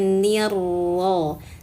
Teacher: Syai syaitonir nin idagkan ke huruf ro. Jadi nin masuk ke huruf ro sehingga bunyinya nirro.